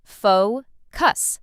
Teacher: Some learners put the stress in the wrong place, but it's simple. Faux cuss. Stress on the first part.